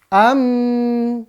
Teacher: Sama kayak nun. Nun bertasydid juga dia di rongga hidung. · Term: gunnah